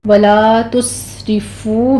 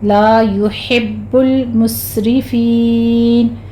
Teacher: ولا تسرفوا میں لام میں الف مدہ ہے، تس میں سین پر ہمس ہوگا سیٹی کی آواز کے ساتھ، اور آگے فو میں واو مدہ یعنی کہ مد عوض کر کے ہم وقف مطلق ہے، یہاں پہ ہم سٹاپ کر دیں گے۔